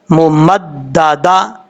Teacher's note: پہلی میم کے اوپر غنہ کریں گے، دوسری میم کے اوپر غنہ نہیں کریں گے